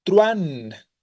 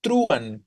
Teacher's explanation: Entonces, tenemos directamente la relación entre U y entre A, ¿vale? Decimos truán, donde la tonicidad se da sobre la A. Y cuando una tónica es una vocal fuerte, recuerden, se genera diptongo, no hiato.